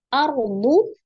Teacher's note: Kemudian ada juful ya, ada alif lam komariyah ya atau izhar komari, lamnya dibaca tarjuful. Ardu, ada ro sukun sebelumnya fathah di huruf alif, ro-nya dibaca tebal ya atau tafkhim.